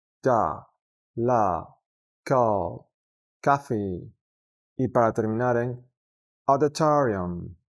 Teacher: Lograremos pronunciarla correctamente al pensar en una O en español que se abre